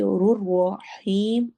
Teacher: رحیم میں یا مدہ اور مد عارض وقفی ہے تو وہ زیادہ لمبا ہوگا